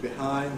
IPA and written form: bɪˈhaɪnd (behind)